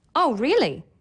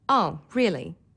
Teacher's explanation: Changing the pitch in your voice, making it higher or lower, allows you to show surprise, Oh, really? or boredom